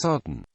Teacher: with a raised vum that lowers during the occlusion this causes an audible nasal release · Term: post nasalized stop